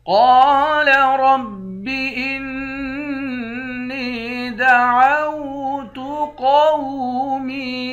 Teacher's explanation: قال رب انی دعوت قومی، قاف اور را دونوں کو موٹا پڑھیں گے، قاف کے بعد الف ہے، الف حروف مدہ ہے، 1 الف کے مقدار کھینچیں گے، حمزے کو نون کے ساتھ ملا کر نون پر غنہ کریں گے، نون کو یا کے ساتھ ملا کر یا کو 1 الف کے مقدار کھینچ کر پڑھیں گے، قاف کو موٹا پڑھیں گے۔